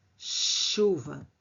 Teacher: há fonemas que se transformaram em sons palatais, que nós pronunciamos empurrando a língua ao céu da boca. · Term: Palatalização